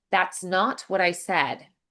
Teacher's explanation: make the T's a little bit more dentalized? So, think of mixing them with a D.